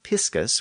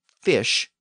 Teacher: the shift from the Latin piscus with the p sound to English fish with the F sound